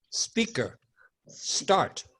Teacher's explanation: leave the e off of the beginning of the S words in English